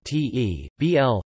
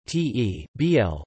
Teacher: the syllabic (i.e., vocalic) l in the English word table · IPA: [ˈtʰeɪ.bl̩]